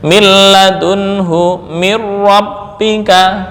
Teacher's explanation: nun yang bertemu dengan ra atau nun yang bertemu dengan lam ini diganti langsung dengan huruf sesudahnya yang disukun